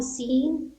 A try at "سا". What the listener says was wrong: دیکھیے سا کا تلفظ الگ ہے اور سین الگ ہے. سا سین. سا کو نکالنے میں زبان کو، جو سامنے جو زبان کی نوک ہے، جو اوپر والا دانت ہے نا، اس کے کنارے سے ٹچ کیجئے، سا سین.